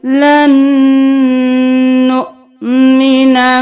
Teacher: لام زبر نون لن، اب پھر نون کو پیش کے ساتھ نون پیش حمزہ نو لن نو، یہاں پر واو نہیں پڑھیں گے، حمزہ کے اوپر جزم ہے جھٹکا دیں گے